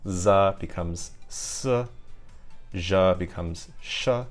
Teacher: So in Spanish these sibilant sounds they lose their voicing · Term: devoicing